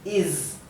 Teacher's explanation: cuando la s está al final de una palabra se pronuncia la s dura la s vibrada Z no es no es la s suave del español es